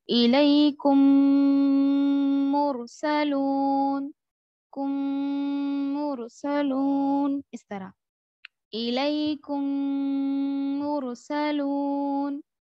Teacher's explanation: میم کو میم سے ملا کر غنہ اور اخفا غنہ کے ساتھ پڑھیں گے، اس کو ادغام شفوی کہتے ہیں